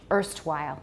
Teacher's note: the er starts right at the beginning of the schwa